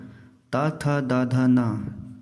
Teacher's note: तवर्ग, मुंह में ऊपर दांतों की पंक्ति से जीभ टकराती है।